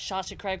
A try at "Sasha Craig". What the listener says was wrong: Okay, you said salsa. You said